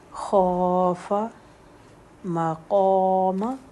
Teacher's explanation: مقام، قوف کی حرکت 2 اور میم کی 1